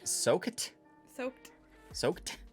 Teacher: words that end in KED, like soaked with a T sound at the end